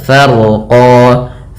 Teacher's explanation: ra-nya dibaca dengan tebal karena huruf ra yang dia sukun sebelumnya fathah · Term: ra-nya tebal